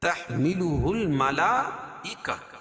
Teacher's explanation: گولتا کو وقف کی حالت میں ہائے ساکنہ سے بدل دیں گے